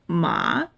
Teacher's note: If you say ma with a dip in tone, it means horse.